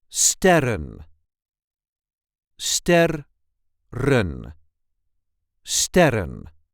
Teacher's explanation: For the plural version, the emphasis is on the first syllable.